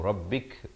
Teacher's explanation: kaf bila diwaqafkan ada bunyi hamas atau bunyi angin